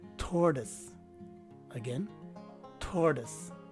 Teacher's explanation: The phonetic spelling will tell you that the stress is right in the first syllable or in the beginning of the word. That stress is being emphasized by the presence of the circumflex sign on top of the letter O.